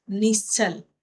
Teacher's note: श है तालव्य से तालु से बोला जाता है।